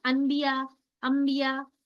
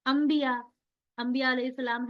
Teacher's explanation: جیسے ہی آپ یہ انبیاء بولنا چاہ رہے ہیں تو خود بخود میم کی آواز نکل رہی ہے نا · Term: اقلاب